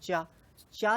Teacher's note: चा जहां से निकल रहा है अंदर से, वो जगह जहां पर थोड़ा सा टकराव हो रहा है वो तालु है